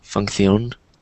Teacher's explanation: I know in Spanish, whenever you have a Z or CE or CI, it's like you use the theta, so you say the, función, instead of función.